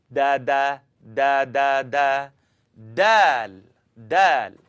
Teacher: I want you to tap your tongue behind the top teeth.